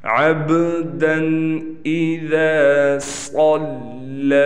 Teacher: صاد موٹا ہے لہٰذا اس کو پر کر کے پڑھیں گے